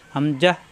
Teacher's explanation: শক্ত করে উচ্চারণ করতে হবে কন্ঠনালীর শুরু থেকে